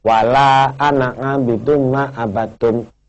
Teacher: Padahal ananya itu kan panjang, tapi wajib dibaca pendek.